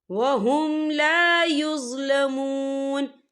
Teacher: یہ دیکھیں وہم یہاں میم ساکن ہے، میم ساکن کے بعد جو ہے لام آ رہا ہے تو یہاں پر اظہار شفوی ہوگا، ہم یہاں غنہ نہیں کریں گے، ہم اسے غنّے کے بغیر پڑھیں گے